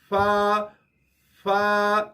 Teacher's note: اور یہ فا دونوں ہونٹوں کے ملنے سے یہ ادا ہوتا ہے۔ فا اگر ہونٹوں کی سرے بھی مل جائے، فا فا یہ ادا ہو جائے گا۔